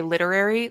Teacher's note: I think I'm dropping an R when I say literary. Like I think I'm like accidentally like rolling over it too much.